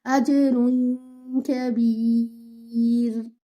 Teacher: you will not touch the makhraj of noon, you will go close to the makhraj of kaf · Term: ikhfa